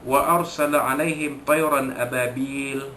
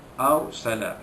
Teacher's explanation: ra sukun itu dibaca tebal